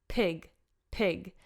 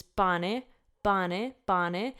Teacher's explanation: in English they're very aspirated so a lot of air is being punched out of our mouths basically as we're pronouncing them whereas in Italian there's hardly any air coming out